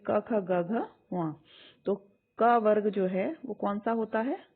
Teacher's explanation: मैंने आपको बताया था अगर आप बोलेंगे के ख जी ग यह कंठ से निकलता है गले से ध्वनि निकलते है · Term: के वर्ग